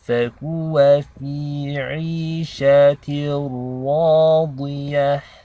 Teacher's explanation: this ra is heavy because it takes a fatha.